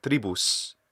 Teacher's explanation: he has the retracted s sound so i think this is part of his native pronouncing of the s · So he's saying not s, but sh.